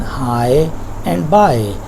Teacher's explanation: It is pronounced like I, and it becomes a single flow, not separate two vowel sounds. They are not separate vowel sounds, and you find them in high and by. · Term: diphthong